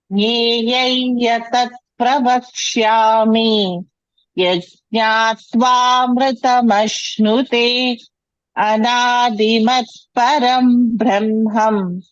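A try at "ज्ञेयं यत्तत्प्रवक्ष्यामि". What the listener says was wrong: It is Nyayam Yat Tat. I heard it Yatat. Yat Tat. Yat Tat. And second line, you said Brahmam. It is Brahma. Anadimat Param Brahma. Not Brahmam.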